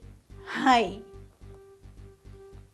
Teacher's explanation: that's pronounced with a nasalized sound